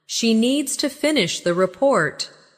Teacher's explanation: Stress needs and report. And let the small words fall quietly. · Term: rhythm